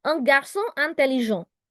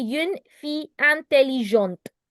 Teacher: Do you hear that I'm not saying the te in the end?